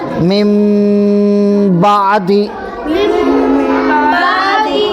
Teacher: میم ساکن کے بعد اگر با آئے تو نون کو میم سے بدل کر غنہ اور اخفا کے ساتھ پڑھیں گے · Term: اقلاب